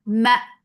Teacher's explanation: for fatha open jaws attach with hamza. Hamza will cut off the sound abruptly.